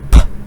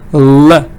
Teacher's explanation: the sound p, no vibration, or k, no vibration, but l, vibration, there is voice. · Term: voice from the throat